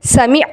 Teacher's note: ऐन की आवाज को हमजा की आवाज में तब्दील नहीं करना।